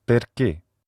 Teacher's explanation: The close mid front unrounded vowel is I, and this is a vowel that occurs in Italian and French, for example, and it can be heard in the Italian word perché, why.